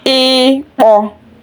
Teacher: e is pronounced deep and shorter